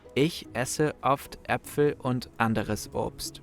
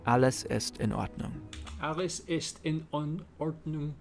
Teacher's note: Germans pronounce vowels very strongly, especially when they appear at the beginning of a word. This causes the vocal cords to open suddenly and all the air that has built up to escape at once. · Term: glottal stops